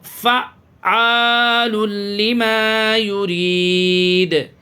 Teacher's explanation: یہ عین کے اوپر تشدید ہے، اچھے سے اس کو فا کو عین میں ملائیں۔